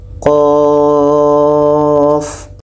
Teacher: Kita panjangkan qa-nya 6 harakat baru matikan fa.